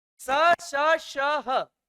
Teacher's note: घर्षण हो रहा है तो हीट होगा, इसलिए स श श ह को उष्मी व्यंजन भी कहते हैं